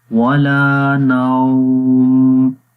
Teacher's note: ہے، ولا 1 سیکنڈ، اور نوم جب یہاں پر رکیں گے، یہ واو کے اوپر جزم اس سے پہلے زبر آئے تو وہ واو لین ہوتی ہے، اور واو لین کو نرم پڑھتے ہیں